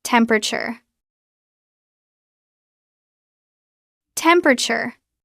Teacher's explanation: We usually drop the second e. It becomes temperator.